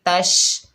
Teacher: شین ساکن ہے، شین کی آواز پھیلتی ہوئی محسوس ہوتی ہے